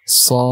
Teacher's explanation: Di surah Shad, panjang 6 harokat, dan ada hukum qalqalah di akhir.